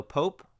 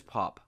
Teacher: When we add an E, the O becomes long. So it's not ah anymore, it's O. So Pope versus Pop.